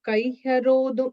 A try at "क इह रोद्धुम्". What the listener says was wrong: Rodum and the im, you said im, right? I cannot hear the im.